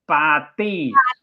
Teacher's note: When we say party in Thai, we say party, which uses fish, papa, and tao. So it's the unaspirated P and the T. They are similar to what we have in English, but there's no strong blast of air.